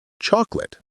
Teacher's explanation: The word flows quickly. It shouldn't have three distinct beats. It's two beats.